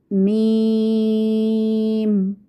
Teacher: मीम को अदा करते हुए देखेंगे आप कि होंठों के खुश्क हिस्से को कदरे नरमी से मिलाकर बारीक आवाज़ में हम अदा करते हैं। इस पर एक बात याद रखिएगा कि मीम की अदायगी में होंठों के खुश्क हिस्से से मुराद वो हिस्सा है जो होंठों के खुश्क और अंदरूनी गीले हिस्से के दरमियान होता है।